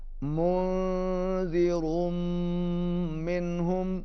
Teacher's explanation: نون پر اخفا ہے اور میم مشدد کے اوپر غنہ ہوگا